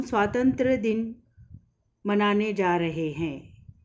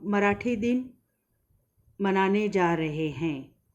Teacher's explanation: दिन उच्चारण ह्रस्व होना चाहिए, न कि दीर्घ होना चाहिए।